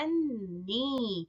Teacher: You can see there is a sukoon. The first noon is with the sukoon and the second noon is with the kasra, and both of them gets overlapped